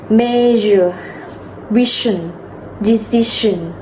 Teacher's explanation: Activate your vocal cords. Unlike SH, which is voiceless.